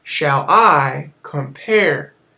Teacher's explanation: unstressed and then stressed syllables it's a pattern